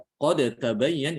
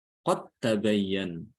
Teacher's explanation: Contohnya ketika ketemu ya, antara huruf yang mutajanisan seperti dal ketemu dengan ta pada lafaz qad tabayyan. Jadi dalnya diidghamkan ke ta ya. Sehingga tidak boleh dikolkolahkan karena idgham itu menghalangi qalqalah ya.